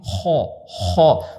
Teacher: حلق کے پہلے حصے سے خا نکلتا ہے